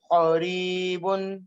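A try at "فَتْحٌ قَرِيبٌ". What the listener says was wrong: فتح نہیں فتح. قا کی کھینچنا نہیں ہے, قاف زبر قا ہے, حرکات کو کھینچنا نہیں ہے, جلدی پڑھنا ہے. فتح قریب.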